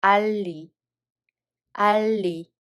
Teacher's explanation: this ㄹ sound consonant assimilates the following ㄴ sound. So it becomes ㄹ sound as well.